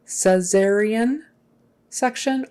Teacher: cesarean with a Z sound in the middle.